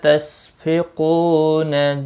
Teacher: قو واو مدہ ہے، ایک الف کے برابر کھینچ کر پڑھیں گے